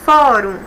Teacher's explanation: senadores participam de fórum e íbero-americano fórum uma palavra de sílaba eu tenho duas sílabas e a penúltima sílaba é a mais forte